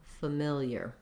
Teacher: instead of being stressed on the first syllable like similar in familiar we have the stress on the second syllable mill so again we have that it vowel in our stressed · Because these letters FA are in an unstressed syllable that's at the start of the word, we have the vowel schwa. So rather than an A like family or something else with an FA sound, it's going to sound more like familiar.